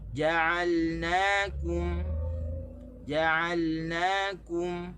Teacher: tekan di na, tekan di kaf. Okey, di jim tak boleh tekan.